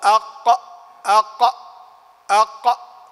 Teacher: هذا هو المخرج الخامس، هو للقاف وهي أقصى اللسان من فوق، يعني مما يحاذيها من الحنك الأعلى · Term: القاف